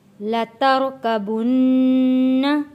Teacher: لترکبن، را کو موٹا پڑھیں گے